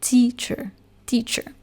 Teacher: we are going to say teacher with the stress on the first syllable teacher teacher but in French for a similar word like Professor